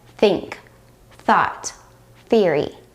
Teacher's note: The only difference is that the unvoiced sound does not require you to use your vocal cords while the voiced th sound does require the use of your vocal cords.